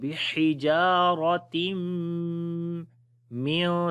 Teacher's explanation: تنوین کے بعد جب نون ساکن اور تنوین کے بعد میم آ جائے تو ادغام غنے کے ساتھ کیا جاتا ہے